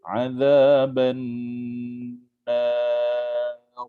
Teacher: Hujung dia kita berhentikan ra. Kita sukunkan pada ra dan sebelum itu berbaris atas. Jadi ra di situ adalah ra tebal.